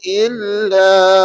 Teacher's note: bila berhenti pada illa hanya sekadar 2 harakat